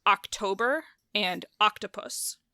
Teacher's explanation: There's no vowel reduction, like octopus sometimes gets reduced to a schwa in the middle. But October, the emphasis is on the toe, and octopus, it's on the ok